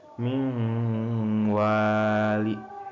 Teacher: Mingwali itu contohnya idgam biguna karena dengan guna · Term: idgam bigunah